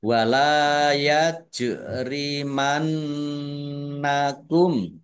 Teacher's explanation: Jim sukun bacaan kolkolah dibaca memantul ditampakkan pantulannya. Nun tasdid ya, dibaca gunnah atau mendengung ditahan biar tampak dengungannya. · Nun tasdid ya, dibaca gunnah atau mendengung ditahan biar tampak dengungannya. Kemudian mim sukun bertemu dengan huruf shin bacaan idhar safawi dibaca jelas.